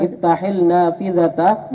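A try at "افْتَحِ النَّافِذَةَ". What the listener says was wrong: Jangan bunyi lamnya. Lamnya ketenggelam ya, hilang lamnya.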